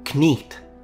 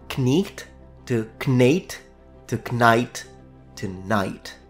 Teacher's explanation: the vowel I, for the majority of the medieval period, was actually pronounced as a long E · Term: Great Vowel Shift